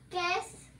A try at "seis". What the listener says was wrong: Cies. You said ques, like queso. Cies. I think it's S-E-I-S.